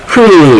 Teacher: 마지막으로 목청 사이에서 나는 소리